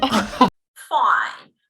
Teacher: there is this pretty flat, lifeless, if you like, intonation, that seems to convey this lack of speaker interest or engagement